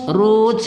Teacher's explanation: ingat ta ada suara angin berhembus di belakangnya pada sifat hams